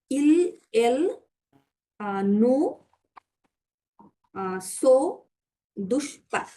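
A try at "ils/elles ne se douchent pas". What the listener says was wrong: এটা নো বলেছেন but নো হবে দন্ত নৌকারে নো ইল এল নো সো দুষ্পা right okay সো দুষ্পা correct এবার ইন্টারগ্রেটিভ করেন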